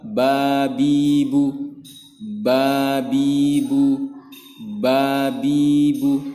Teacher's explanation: makhroj huruf ba yaitu adalah bibir atas dan bibir bawah dirapatkan bersama-sama yaitu kedua bibir dirapatkan